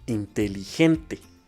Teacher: La sílaba tónica recae en la penúltima sílaba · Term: grave